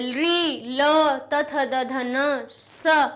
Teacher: ये सब दांत से टकरा कर निकलते हैं, इसलिए इनको दंतव्य कहते हैं।